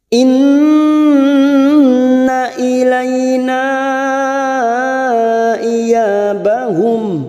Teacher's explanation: Nun yang bertasdid, gunnah musaddadah, kita tekan selama 3 harakat.